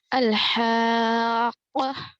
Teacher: ہا کا مخرج کیا ہے؟ حلق کا درمیانی حصہ، اور قاف زبان کی جڑ اوپر تالو کو لگنے سے ادا ہوتا ہے۔